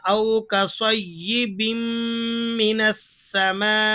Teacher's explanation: ادغام بھی ہوگا یعنی تنوین کا میم میں ادغام ہو جائے گا، اور اسی طرح یہاں جو آواز نکلے گی وہ ناک کے ذریعے سے نکلے گی۔ او کصیب، او کصیب من السماء، اس طرح نہیں پڑھیں گے بلکہ او کصیب من السماء۔ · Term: ادغام مع الغنہ